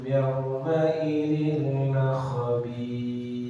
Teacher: Khabir yang ada di sukun 4 harokat yang harus lebih dari harokat gunnah yang dimana dibaca dengan 3 harokat